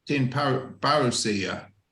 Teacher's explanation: So like this parusia is almost tin parusia almost, because the P becomes a B. You'll hear it in the songs because you've got the voicing already starting, and it helps with the singing.